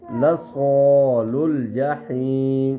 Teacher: صاد کی آواز کو موٹا پڑیں گے ایک سختی سے آواز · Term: صاد کی آواز موٹی